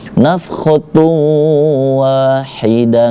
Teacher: tanwin bertemu dengan huruf Waw salah satu huruf idgham maka harus dibaca dengung maka Tun tadi melebur ke dalam huruf wow maka dibaca nafqotulwahi